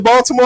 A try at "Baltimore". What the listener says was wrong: You can't because you pronouncing the T too hard. That's how I know you ain't got family in Baltimore. It ain't even no T in Baltimore.